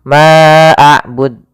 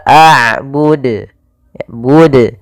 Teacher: Harusnya tidak boleh ditambahkan hamzah, tetap dijelaskan qalqalahnya.